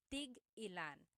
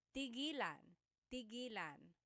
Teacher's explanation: when there's a hyphen in it, you have to have that glottal stop.